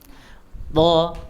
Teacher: Ujung lidahnya ada di gigi atas, gigi seri atas bagian dalam. Ya, bagian belakang. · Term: huruf to